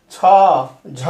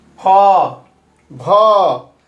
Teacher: ये इस तरह जो होता है ये चीज़ है आपको, मतलब अल्प प्राण और महाप्राण, मतलब फेफड़ा से कम हवा निकलने वाला अल्प प्राण कहलाता है, और उच्चारण में फेफड़ा से ज़्यादा हवा निकलता है तो महाप्राण कहलाता है